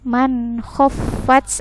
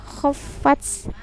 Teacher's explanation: man khaffat ada tak yang sukun. Jadi diperlihatkan desisnya ya, anginnya.